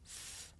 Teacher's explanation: I make the sound by sticking my tongue out just a little bit th, and blowing air between my tongue and my top teeth? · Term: voiceless consonant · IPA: /θ/